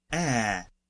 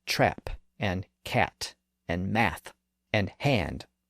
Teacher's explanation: this is one of the lowest front vowels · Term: short a sound